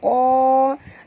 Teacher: Qa tebal, jangan baca ka tapi qa.